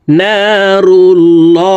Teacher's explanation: আল্লাহ শব্দের আগের হরফে জবর অথবা পেশ হইলে এই লামকে ল অর্থাৎ মোটা করিয়া পড়িতে হয় তো এখানে আল্লাহ শব্দের আগের হরফে পেশ আছে এই কারণে এই